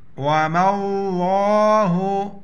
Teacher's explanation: لفظ اللہ سے پہلے زبر ہے تو لفظ اللہ موٹا پڑھیں گے